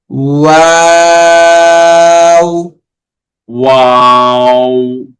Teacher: ওয়াওতে শুরুতে এবং শেষে পুরোটা সময়তেই ঠোঁট গোল থাকবে